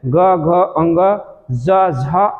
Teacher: उच्चारण में स्वर तंत्रियों के निकट आ जाने से उसके बीच में से निकलती हवा से, यानी उन स्वर तंत्रियों में जो कंपन होता है, वैसे वर्ण क्या कहलाते हैं, घोष कहलाते हैं